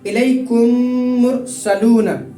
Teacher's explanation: میم ساکن کے بعد میم آئے تو میم کو میم سے ملا کر غنہ کر کے پڑھنا چاہیے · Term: ادغام شفوی